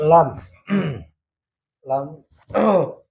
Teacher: Sisi depan lidah menyentuh gusi gigi atas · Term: huruf lam